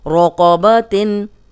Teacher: بقبسن، بقو، صرف قوف موٹا ہے، باقی آرام سے آپ پڑھ لیں گے. رقبتن، قوف موٹا، را پہ زبر ہے، را موٹی